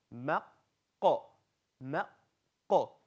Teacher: Qaf. Qaf is not a throat letter, it's a tongue letter, but it comes right at the end of your tongue.